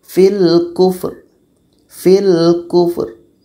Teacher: Mesti terdengar angin fa itu dan ro.